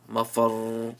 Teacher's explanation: See, ra had a pesh and with a tajdeed. So now you prolong the sound of the ra.